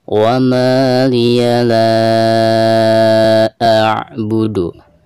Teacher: Maka hukum mad di sini dihukumi mad jaiz munfasil dan dibacanya bisa 4 atau 5 harokat.